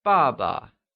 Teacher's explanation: is pronounced using the falling tone